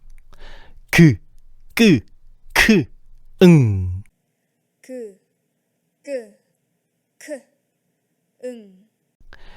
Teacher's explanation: 혀의 뒷부분이 여린 입천장에 닿았다가 떨어지면서 만들어지는 소리들이야. 여린 입천장 소리를 정리하면 이렇게 되겠네.